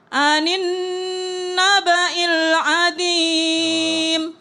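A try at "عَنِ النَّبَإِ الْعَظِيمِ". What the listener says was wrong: Allah, azim, mirip dengan a'udzu tadi. Ya, anin naba'il azim. Cuma lebih tebal aja dikit.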